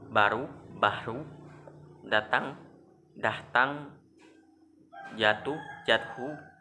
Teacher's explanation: pengucapan suatu bunyi yang disertai hembusan keluarnya udara dengan kuat sehingga terdengar bunyi H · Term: Aspirasi